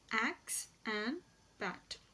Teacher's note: The air sound is described as a front unrounded vowel just below the half open position, and this sound, it occurs initially and medially in the words axe and bat, but it does not occur in the final position.